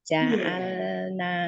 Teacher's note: Walaqad qad dal itu kolkola sugro, ja'al lamnya itu mempunyai sifat bainiyah, tidak boleh dikolkolakan